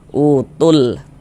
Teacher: Maksudnya dibaca izhar itu dia dibaca jelas huruf lamnya. Terbaca dia dengan jelas. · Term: izhar qamariah